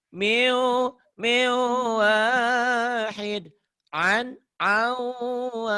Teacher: Kalau ketemu wawu nih nun matinya melebur masuk dan ditahan ada dengung. Min jadi miu.